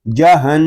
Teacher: نون میں شدد ہے، اس کو غننے کے ساتھ پڑھیں گے